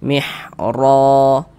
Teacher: Huruf ra memiliki tanda baca fathah ni ya harakat fathah baris satu di atas huruf ni harakat fathah maka huruf ro dibaca tabkhim dibaca tebal sehingga pangkal lidah kita naik terangkat ke atas ketika kita mengucapkannya